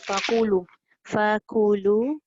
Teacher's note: fakulu jangan tebal nanti jadi qaf.